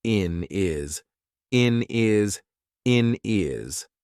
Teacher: we've taken away that H completely and we've made it into one word